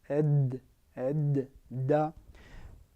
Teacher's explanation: qui a comme point d'articulation l'extrémité de la langue en appui sur la racine des incisives supérieures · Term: la lettre Del